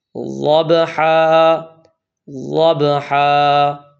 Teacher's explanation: 5 داڑھوں کو لگا کر جب آپ پڑھیں گے تو اس وقت ضاد ادا ہوگا